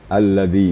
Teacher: ini allazi ini ujung lidah kita ditemukan dengan gigi atas. Allazi, maka keluarlah suara lembut sedikit.